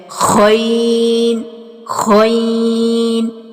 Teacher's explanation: गैन जो है ये मोटा और पुर हरूफ है, इसको पुर और मोटा ही हम पढ़ेंगे और इसको इस तरह से पढ़ेंगे जैसे हम गरारे करते हैं ना, और आवाज़ जो है इस तरह से निकलती है, गैन गैन।